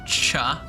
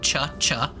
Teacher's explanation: I make my ch sounds like really far back in my mouth, like cha. My tongue goes way back, cha.